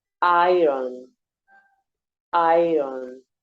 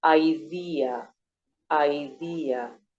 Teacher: Even though the E is more relaxed and shorter, you need to pronounce it completely. So you have to pronounce the whole diphthong, the A, which is longer and louder, and the E, which is shorter and more relaxed. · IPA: /ai/